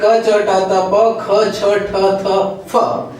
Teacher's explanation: इनको बोलने में स्वर तंत्र में कंपन कम होता है इसलिए अघोष है